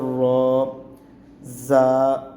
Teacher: دانتوں کی جڑیں ہیں، وہاں تالو کے حصے پہ زبان لگا کے را کو پڑھا جائے گا۔